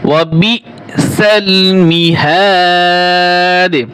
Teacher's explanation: দাল পেশ দু বানানোর সময় দু হবে, আর রিডিং এর সময় এখানে কলকলা হবে।